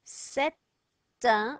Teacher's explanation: I'm going to sound that N because there's a vowel after it. I'm going to sound that T because there's a vowel after it.